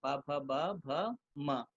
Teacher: इसका उच्चारण स्थान जो है ओष्ठ है, अभ्यंतर प्रयत्न स्पर्श है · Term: पवर्ग